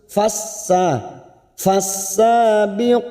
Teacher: fokus pada huruf Sin yang bertasdid masuk tanpa ditekan lama-lama hanya masuk fasa fasabiqoti sa dua harakat kita panjangkan qo dua harakat masing-masing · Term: idgham samsiyah